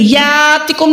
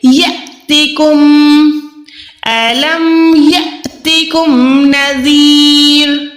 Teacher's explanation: या के साथ अलिफ जो है ये लंबा वाला अलिफ नहीं है, यातिकुम नहीं है, बल्कि यहाँ पर हमने क्या करना है, अलिफ साकिन है, यहाँ पर ये जो है हमजा साकिन है, यहाँ पर हमने झटका देना है।